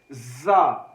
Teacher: زا حروف صفیریہ میں ہے اور سختی کے ساتھ پڑھا جاتا ہے